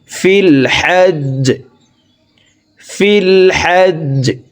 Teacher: জিম যেহেতু কলকলার হরফ নিচের দিকে ধাবিত করে ধাক্কা দিয়ে সাকিন করতে হবে